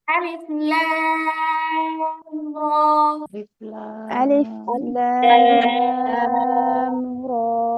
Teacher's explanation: রয়ের মধ্যে মাত্র এক আলিফ টান, সোজা হবে উচ্চারণ